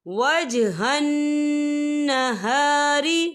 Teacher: نون مشدد ہے تو یہاں پر غنہ ہوگا